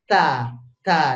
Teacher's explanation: ada angin yang mengintervensi kita kalau mau ngomong Da kalau Ta Ta ini bukan ditolak aja tapi ta ditiup ta ta ditiup Nah kalau th th itu sama dengan ta · Kalau ta ini bukan ditolak aja, tapi ta ditiup.